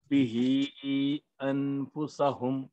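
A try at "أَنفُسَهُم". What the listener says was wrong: इख्फा करना है यहाँ पे, इख्फा छूट गया फिर। बिही अंफुसहुम, अंफुसहुम।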